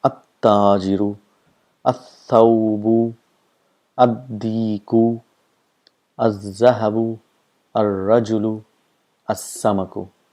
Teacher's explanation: the sound of lam is not produced, and the letter next to it gets a shadda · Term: huruf shams